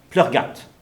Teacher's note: Donc un M après plou devient V. Et très souvent, même le V finit par devenir complètement muet. Donc c'est pour ça qu'on entend Pleurgat. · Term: mutation